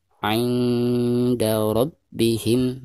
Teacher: Perhatikan nun sukun berhadapan dengan salah satu huruf ikhfa, di sini huruf dal ya. Maka cara membaca nun sukunnya itu harus disamarkan disertai dengan gunah.